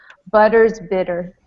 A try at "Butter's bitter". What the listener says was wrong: You can actually, you can give me more R at the end. Butter's bitter.